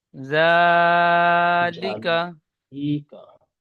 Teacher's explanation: জাল খাড়া জাবার জা, একালি পরিমাণ টান দিয়ে বলবেন।